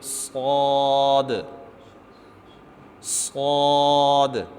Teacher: صاد پر کر کے پڑھیں گے، اور اس کے ادا کرتے وقت ہم اپنے ہونٹوں کو گول نہیں کریں گے، ہونٹوں کو گول نہیں کرنا، صرف اس کو لفظ کو پر کرنا ہے۔